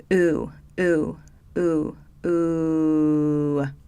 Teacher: I'll start with the high back vowel ooh so this is a sound like in boot